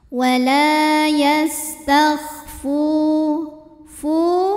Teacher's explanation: karena ada Alif yang sebelumnya berbaris fathah maka cara bacanya panjangkan lamnya ini dua harakat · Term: Mad thi'i ziri, mad tabi'i zahiri